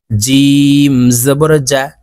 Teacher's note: জিম হরফ জিব্বার মধ্যখান থেকে উচ্চারণ হবে